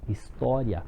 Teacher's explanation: um ditongo crescente ele começa com as semivogais termina com a vogal